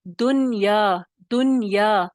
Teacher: लेकिन जब आप अरबी में पढ़ेंगे और कुरान मजीद में पढ़ेंगे, तो आपने क्या करना है, दुनिया नहीं पढ़ना, दुनिया, दुनिया। ठीक है, नून को ना हिलाना है, ना या की आवाज निकालनी है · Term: इजहार मुतलक